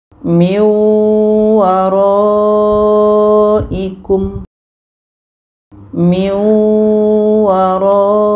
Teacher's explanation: Bunyi nun kita masukkan ke waw. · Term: idgham bi gunnah